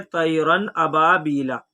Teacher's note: الف مدہ کو ایک الف کے برابر کھینچ کر پڑھیں گے، اس کو حرف مدہ کہتے ہیں۔